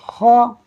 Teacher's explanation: یہ خا حروف مستعلیہ میں سے ہے، آپ نے اس کو کھا نہیں پڑھنا، خا ہی پڑھنا ہے۔ اس کو پڑھتے ہوئے آپ کو یوں فیل ہوگا جیسے کہ آپ اپنا گلا صاف کرنے کی کوشش کر رہے ہیں، کیونکہ عربی کے حروف ہیں، پڑھنے کی پریکٹس ہوتی نہیں ہے، لیکن انشاءاللہ پریکٹس کرتے رہیں گے تو آسان ہو جائے گا۔